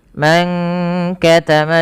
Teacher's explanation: Nah, ini tidak dibaca dengan mang katama tapi disamarkan kepada huruf kafnya. Jadi ikhfanya itu menyamarkan nunnya kepada huruf kaf. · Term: ikhfa hakiki